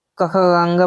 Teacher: कंठ से क ख ग बोला जाता है